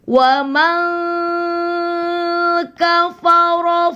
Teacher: nun mati ketemu kaf ikhfa